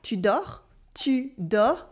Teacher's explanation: we simply ask, tu dors, with the voice going up.